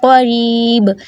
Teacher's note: اقصی لسان بالمقابل اوپر کا نرم تالو